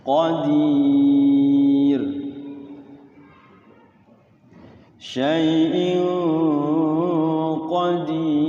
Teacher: Tarqik tipis ya. Karena sebelum rnya itu ya sukun didahului oleh kasrah ya qadir tipis